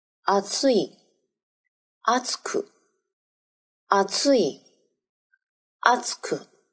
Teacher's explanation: 三个假名的形容词，同时声调是二的形容词，变成副词以后，声调变为一